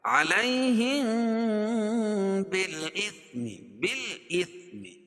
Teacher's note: اخفاء شفوی یعنی ہونٹ سے اس کو اخفا کریں گے